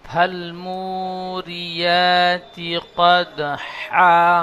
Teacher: এই বড় হাগুলো গলার বীজখান থেকে উচ্চারণ হবে